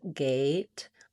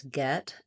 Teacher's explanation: A is sliding and tense, gate versus get, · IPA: /eɪ/